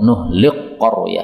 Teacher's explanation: Kaf ketemu qf ini makhrajnya dekat sehingga boleh untuk idgham